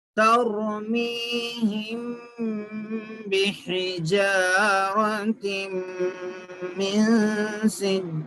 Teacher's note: تر را پہ جیسا میں اس سے پہلے زبر ہے تو موٹا پڑھنا را کو, ترمیم نہیں پڑھنا.